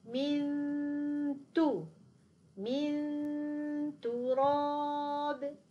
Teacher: صوت الغنة سيكون غالب على الصوت الذي سوف يمر من الفم، لأن المخرج ليس مفتوح كثيرا، لاحظوا أنه قليل جدا، لذلك سيمر جزء من الصوت. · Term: الإخفاء